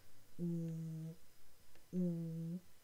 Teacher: If you say something like oo, your lips become rounded.